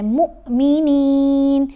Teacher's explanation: یہاں دیکھیں پیش کے ساتھ واو ساکن ہو تو وہ حرف مدہ ہے، لیکن یہاں حمزہ ساکن ہے، واو نظر آ رہی ہے لیکن واو کے اوپر جزم نہیں ہے، حمزہ کے اوپر جزم ہے. تو ہم نے میم کو جب حمزہ ساکن سے پڑھنا ہے تو جھٹکا دے کر پڑھنا ہے